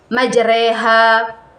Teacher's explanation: bacaan ini berarti membaca fathah yang condong ke kasrah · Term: imalah